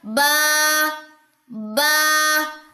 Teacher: آپ اس کو بے نہیں پڑھ سکتے، بے، بے نہیں، یہ غلط ساؤنڈ ہے، یہ مجہول ہے. اس طریقے سے پڑھنا جو ہے وہ درست نہیں.